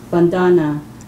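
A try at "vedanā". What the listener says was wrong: No vandana. Vandana means worship. Vedana.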